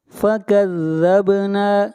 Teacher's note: با کے اوپر قلقلہ، نون کو کھینچ کر پڑھیں گے ایک الف کے برابر